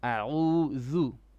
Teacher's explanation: Your Ayn needs to come from middle throat.